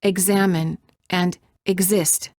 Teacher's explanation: If the vowel following the X is stressed, the X is pronounced as gz